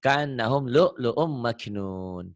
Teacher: ada hamzah mati kayak neken gitu loh